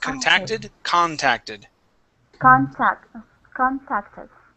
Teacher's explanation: the stress is going to be at the beginning